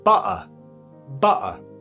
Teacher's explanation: Meanwhile, across the pond, in accents like Cockney or Estuary English, which is spoken around London, the T might just drop out altogether. So it's replaced by a brief pause, which is known as a glottal stop. So butter becomes like this.